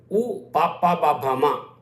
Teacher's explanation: పెదవుల నుంచి వస్తాయి, వీటిని ఓష్ట్యములు అంటారు